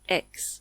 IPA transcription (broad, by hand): ɛks